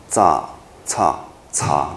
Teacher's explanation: 前三个是我们说它是齿叉音，啊，炸、叉、叉都是跟那个牙齿有接触，齿叉音